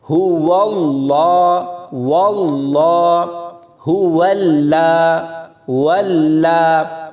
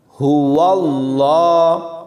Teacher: واو کو لام کے ساتھ ملاتے ہوئے لام کو باریک نہیں پڑھنا، لوگ یہاں باریک پڑھتے ہیں، هو اللہ، واللہ، هو اللہ، واللہ ایسے نہیں پڑھنا، هو اللہ ایسے پڑھیں گے۔